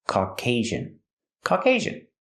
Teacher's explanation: Put the stress on the second syllable. And the second syllable has a long A sound.